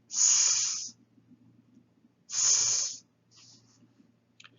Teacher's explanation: You're not stopping the air, but you're placing your tongue behind your teeth and you're squeezing the breath out through here without engaging the vocal cords. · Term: dental sibilant